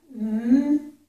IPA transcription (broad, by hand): n